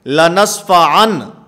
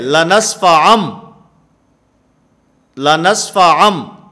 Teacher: میم کے ساتھ اس نون کو بدل دینا ہے، اس کو اقلاب کہا جاتا ہے